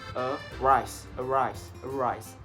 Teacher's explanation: For example, is a rise. So the first syllables is like the unstressed one, and then rise is like the stressed one.